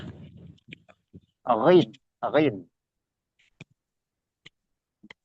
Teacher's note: makhraj huruf gin di tenggorokan